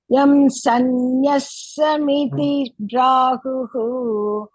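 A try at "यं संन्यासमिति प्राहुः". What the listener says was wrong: No, I think you heard sanyasta. It's first the sannyasa. Yam sannyasa miti prahu. Yam sannyasam iti prahu. Yam sannyasa miti prahu.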